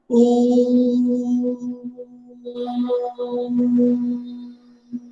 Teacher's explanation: प्लुत स्वर इसमें 3 मात्रा काल का समय लगता है, इधर तिगुना समय लगता है।